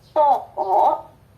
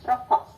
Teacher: Kemudian O, ada O bulat, ada O yang separuh bulat. O bulat itu terdapat pada silabel terbuka, dan O yang separuh bulat itu ada di silabel tertutup.